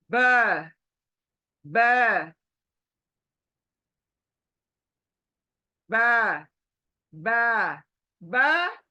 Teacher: ब हमारे होठ दोनों मिलने चाहिए